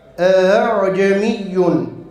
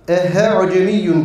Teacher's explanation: Burada dikkat etmemiz gereken bir husus var he sesini telaffuz etmememiz gerekiyor bazıları telaffuzda telaffuzda ehe cemiun gibi bir o da teshilin bir